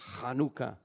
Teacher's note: That's not an H sound. That's a real strong CH sound, like in Bach. So to say Hanukkah, you got to say Hanukkah.